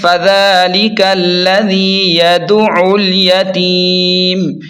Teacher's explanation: عین پر تشدید ہے، اسے حلق کے درمیان سے دبا کر صاف نکالیں